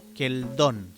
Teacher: respecto a la hl, también dijimos que se podía pronunciar l